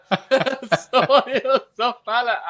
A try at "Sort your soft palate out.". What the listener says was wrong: Oh my God, you're so nasally. Stop being so nasally. So I know your thumb is not clean. But if you want, go inside. Go inside.